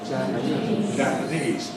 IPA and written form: ˌʤæpəˈniːz (Japanese)